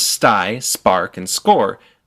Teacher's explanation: Now, English uses this puff of air, technically known as aspiration, in all situations except one, when those 3 consonants come after the letter S. So in the words sty, spark, and score, there's no puff. These are unaspirated consonants.